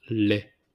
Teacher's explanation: So we don't pronounce the T at the end